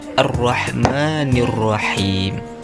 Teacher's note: Ada huruf ha kecil. Makhrajnya wasat halak, tengah tenggorokan.